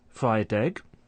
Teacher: there's linking of a final consonant sound to a following vowel sound